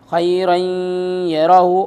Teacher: ادغام مع الغنہ ہوگا، یعنی غنے کے ساتھ پڑھا جائے گا